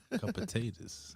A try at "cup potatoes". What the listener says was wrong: sound like you're saying a couple potatoes that time.